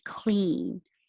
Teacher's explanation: it's a single syllable word but you're still going to stretch the vowel e